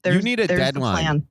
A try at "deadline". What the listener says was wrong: A deadline. You said it like 2 words.